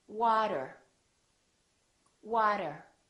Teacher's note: the T sounds more like a D sound or what we call a very fast D